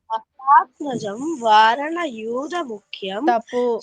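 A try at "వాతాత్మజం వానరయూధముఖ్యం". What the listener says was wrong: తప్పు వారణ, అక్కడ వానర.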